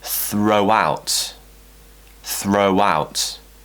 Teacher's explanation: Now because that diphthong finishes with a round shape, a round vowel shape, O, with the mouth, that means we're always, when we do the round shape, that means we're always going to create a W sound to join to the next vowel